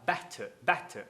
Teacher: Better pode ser falado better? Sim, porque a tônica é a primeira sílaba.